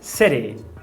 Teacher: E na palavra city, eu não quero esse eu quero que você faça um flapping e diga city.